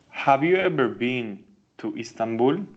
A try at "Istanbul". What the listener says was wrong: To Istanbul. The I is not pronounced. Istanbul, okay?